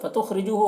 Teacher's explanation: خاء کو پر پڑھیں گے، حروف مستعلیہ میں سے، را کو باریک پڑھیں گے